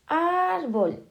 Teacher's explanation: ahora tenemos árbol en la penúltima sílaba, entonces es llana